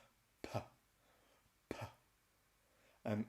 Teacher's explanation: now we're going to arrest and stop the air with our lips, and then we're going to release the sound. That's the P sound, P, P. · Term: plosive P